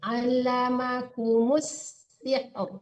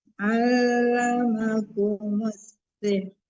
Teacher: Jangan allamakumul, allamakumus sihr. Ditasdidkan mim ke sin langsung, enggak ada lam di situ ya. Lamnya masuk ke sin.